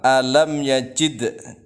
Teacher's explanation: dalnya itu adalah qalqalah sugro, memantul kecil